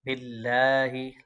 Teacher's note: लफ्ज़ अल्लाह के लाम को बरीक पढ़ेंगे।